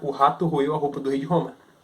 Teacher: Porque antes, com o R vibrante, isso era de fato um trava-línguas, mas hoje em dia, como o R ele é mais gutural, ele sai da garganta, ele é um R mais fácil de se pronunciar.